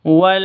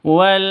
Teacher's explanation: sifat Lin itu lentur tidak boleh disentak tidak boleh dipanjangkan tidak boleh di e dengungkan salah salah ya W itu salah